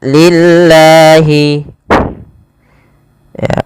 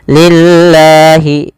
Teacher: Kemudian sebelumnya ada mad tabi'i. Maaf, dia termasuk mad tabi'i pada lafal la-nya karena dia panjangnya 2 harakat